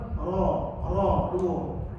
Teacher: ra ni kalau saya belajarnya jangan getar lebih daripada 2.